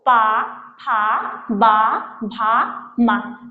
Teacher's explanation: पा फा बा भा मा, इनका उच्चारण स्थान ओष्ठ होता है